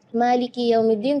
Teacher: Malikiyaumiddin kedengarannya syukur maka ketika kita membaca memiliki kita perhatikan Kak kasrah di huruf Kaf harus kasrah yang sempurna